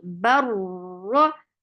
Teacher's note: ra is heavy and the sound is short